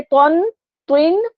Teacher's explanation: 2 پیش تن میں ہم نے غنہ نہیں کرنا کیونکہ آگے آ رہا ہے یرملون میں سے رو